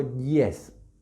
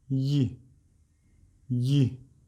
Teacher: es como una I extrema, porque está muy cerca del paladar cuando pronunciamos la I con la que empezamos yes, que se representa con este símbolo que para nosotros sería como una J, ¿sí? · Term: semivocal